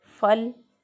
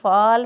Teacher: लाम जो है पीछे वाले ज़बर ज़ेर पेश वाले हरफ के साथ मिलेगा, तो लिहाजा फ़ा के साथ इसको मिलाया तो अलिफ पढ़ने में नहीं आएगा। फल, इसको अगर फ़ाल पढ़ें तो गलत हो जाएगा।